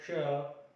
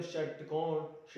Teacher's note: इसके अलावा जो हमारा श है षटकोण वाला, वह भी मूर्धन्य है, क्योंकि इसका उच्चारण जब हम करते हैं श, या फिर हम बोलते हैं जब षटकोण श, तो इसका उच्चारण हम पाते हैं कि हमारी जीभ की जो नोक है वह मूर्धा को स्पर्श करती है, तो यह भी मूर्धन्य है